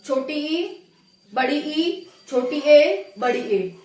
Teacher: आगे वाला भाग जिनके उच्चारण में उठेगा उसको हम अग्रस्वर कहेंगे